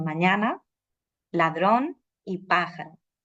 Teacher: en español sí que se prolongan un poco las vocales de la sílaba acentuado